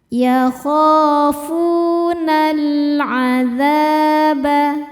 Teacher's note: Berikutnya ada alif lam qamariah. Sebab alif lam menghadapi huruf qamariah yaitu ain. Cara bacanya lam dibaca jelas.